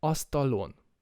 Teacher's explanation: we choose astalon because o is a back vowel